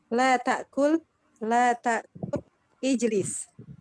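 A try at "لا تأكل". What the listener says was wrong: Sudah betul bacaannya, cuma nadanya aja kurang dikit. Ini larangannya. Jangan la ta'kul, jangan gitu. Tapi la ta'kul. Sama kayak kita bilang ke suami, jangan makan Pak, gitu ya. Jangan makan dulu, gitu ya. La ta'kul, gitu ya.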